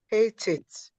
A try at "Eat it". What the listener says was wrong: Eat. The first word is eat. The second word is it. Eat it. You're adding the H again. Try IT and hold your breath.